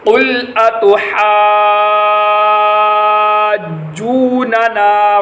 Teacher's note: بڑی مد کو 5 الف کے برابر لمبا کیا جائے گا